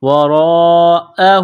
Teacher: ہے، ورا حمزہ زبر ا، وراء ہا الٹا پیش ہو، وراءہ، جب وقف کریں گے تو ہا کو سائلنٹ کریں گے